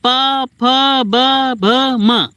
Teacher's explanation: दोनों होंठ आपस में टच हो जाते हैं जब बोलते हैं आप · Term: ओष्ठ